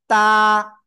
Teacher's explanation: জিহ্বার আগে উপরে 2 দাঁতের গোড়ায় লাগাবেন, লাগিয়ে এক আলিফ টেনে পড়বেন।